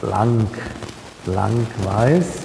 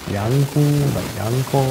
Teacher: Und das L wird aber nicht vokalisiert.